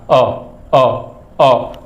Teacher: अ को बोल के देखिए, जैसे जीभ के बीच से बोला जा रहा है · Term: मध्य स्वर